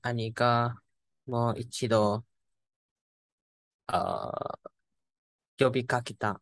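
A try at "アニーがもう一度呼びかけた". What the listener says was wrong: Nice.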